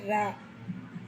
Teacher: நாவின் நுனி மேல் அன்னத்தில் மையப்பகுதி உரசுவதால் தோன்றுவது